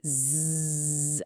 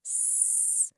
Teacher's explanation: Now switch to S. You can physically feel that intense buzzing motor kick in for the Z and then absolute complete stillness on the S. That's you feeling your own vocal cords turning on and off in real time.